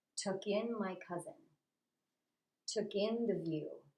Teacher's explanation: we're going to put the stress on the second word